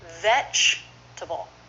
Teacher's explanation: just three syllables with first syllable stressed